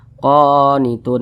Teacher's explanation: atas suatu huruf maka dibaca panjang huruf qo dibaca panjang qonitun Mad thi'i panjangnya dua harakat atau kira-kira dua ketukan